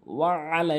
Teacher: তো আল্লাহুম্মা সাল্লি আলা মুহাম্মাদিন, মুহাম্মাদিন ওয়া আলা, লাম কিন্তু অবশ্যই ৩ আলিফ টেনে পড়বেন, ওয়া আলা, এবং আইনটি অবশ্যই হলকের মাঝখান থেকে চাপ দিয়ে।